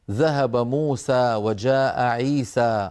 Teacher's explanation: نحن لما نتكلم في كلامنا العادي نمد المد الطبيعي، نقول مثلا ذهب موسى وجاء عيسى، هكذا نتكلم، نمد الألف بمقدارها الطبيعي ولا نزيد على ذلك